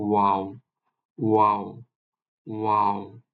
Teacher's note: এরপরে আমরা মুখ গহ্বর থেকে উচ্চারণ করবো হচ্ছে ওয়াও। ঠোঁট ইউজ করবো, ঠোঁটটা একটু গোলাকার হয়ে যাবে